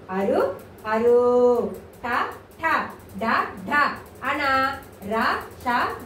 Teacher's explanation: అంగిలి భాగము నాలుక పైన ఉన్న భాగాన్ని అంగిలి భాగము అని చెప్పేసి అంటారు నాలుక అంగిలి భాగానికి తగలడం వల్ల అక్షరాలు పుట్టుకొచ్చినాయి కాబట్టి వాటిని ఏమంటారు అంటే మూర్ధన్యాలు అని చెప్పేసి అంటారు అరు అరు ట